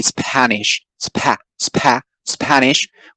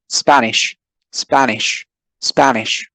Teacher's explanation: the aspiration of p is neutralized because of the presence of the s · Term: no aspiration